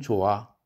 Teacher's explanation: 좋아할 때는 히읗은 표기상은 쓰지만 뒤에 모음이 오면 이 소리 나지 않죠. 융합도 안 되죠.